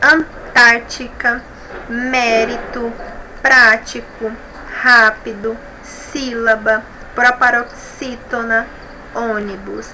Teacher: Todas essas palavras são proparoxítonas, ou seja, a antepenúltima sílaba é a mais forte. Todas elas são acentuadas na sílaba tônica, tá bom?